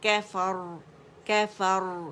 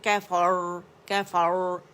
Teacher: تقریر واضح کریں گے، را موٹی ہوگی، زبان پیالہ بنے گی